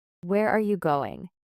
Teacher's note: Your voice falls on going. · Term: falling intonation